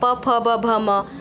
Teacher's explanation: प वर्ग में जितने आते हैं वो हमारे होठ को छू रहे हैं, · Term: स्पर्शी व्यंजन